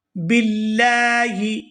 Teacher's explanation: ہے یہ ساکن ہو جائے گا، من المشرکین۔ قولوا آمنا باللہ، یہاں لفظ اللہ کے لام کو باریک ادا کریں گے کیونکہ اس سے پہلے زیر ہے